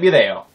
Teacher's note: that's like a really quick soft th that almost sounds like a d but isn't a d